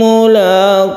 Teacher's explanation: lafaz Allah yang dibaca tebal karena sebelumnya ada dhammah